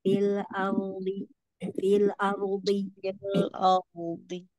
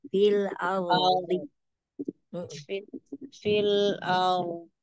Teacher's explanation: a-nya tipis ro-nya tebal